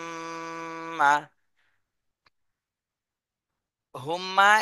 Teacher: হরকতের বামে মিমে তাশদি এটা ওয়াজিব গুন্না